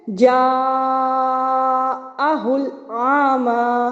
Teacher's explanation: آپ پہ لازم ہے کہ آپ مد متصل کی مقدار کو 2 الف یعنی 4 حرکات کے برابر کھینچیں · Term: مد متصل واجب